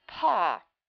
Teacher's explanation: the p and PAW is an aspirate